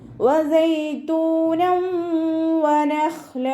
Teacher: തെൻവീനിനെ വാവിലേക്ക് ലയിപ്പിച്ച് ഉന്നയോടുകൂടി ഓതി കൊടുക്കുക കേട്ടോ. ഇവിടെ തെൻവീനെ ശ്രദ്ധിച്ചാൽ അറിയാം, 1 കഴിഞ്ഞിട്ട് 1 എന്നുള്ള രീതിയിലാണ് നിൽക്കുന്നത്, ഒരുമിച്ചല്ല. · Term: ഇദ്ആം ബിഉന്നയുടെ